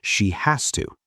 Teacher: When we say she has to, the s becomes like an s, not a z.